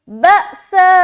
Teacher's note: آگے بأساء، با میں پھر جھٹکا دیں گے کیونکہ حمزہ کے اوپر پھر سکون ہے. اس کے بعد سا میں مد کر رہے ہیں تو 3 سے 4 الف کھینچیں گے، یہ مد ہے، مد متصل.